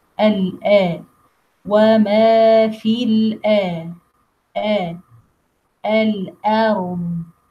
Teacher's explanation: pronounce letter al-hamza deepest part of the throat, and al-hamza is light letter, always light.